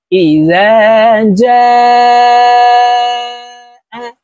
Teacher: জিমে 4 আলিফ টান হবে। মদের হরফের উপরে মোটা চিহ্ন, বামে হামজা, মধ্যে মুত্তাসিল, 4 আলিফ টানিয়া পড়িতে হয়।